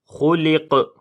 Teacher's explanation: جب یہاں پر قاف کے اوپر رکیں گے تو قلقلہ کریں گے، کیونکہ قاف کے اوپر پھر جزم آ جائے گی اس وجہ سے.